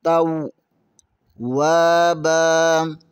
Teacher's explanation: یہاں پر واو ادا کرتے ہوئے ہونٹ گول کریں گے۔ توابا، واو کے آگے الف مدہ ہے، اسے بھی تھوڑا سا کھینچیں گے۔